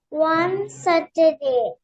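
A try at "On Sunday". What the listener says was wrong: On, one and the O-N-E, but it's just O-N, so on. Look at it slowly. Does it say Saturday? No, check. Does it say Saturday? Sunday.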